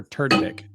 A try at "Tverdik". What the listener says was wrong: You're pronouncing the V.